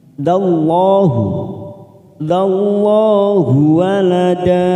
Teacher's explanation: lam jalalah yang didahului fathah pada huruf dal, maka kita baca tafkim. Dallahu walada, da 2 harokat kita panjangkan.